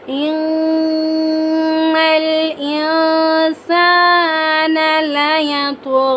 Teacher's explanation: نون جب بھی مشدد ہو کر آئے گا یہاں پر ہم غنہ کر کے پڑھیں گے، غنہ یعنی ناک میں آواز لے جانا۔